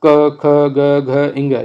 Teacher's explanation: फिर इसमें जो पूरा क वर्ग होता है वो कंठ से निकलता है। क वर्ग जो है वो पूरा कंठ से है